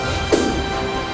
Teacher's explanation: This consonant sound is pronounced as pa sound. When it is produced, the flow of air is obstructed totally. That is, the two lips come together without any flow.